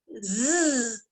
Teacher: my teeth are closed my tongue stays down in my mouth i can feel the sound of this letter vibrating on my teeth and tongue when i make it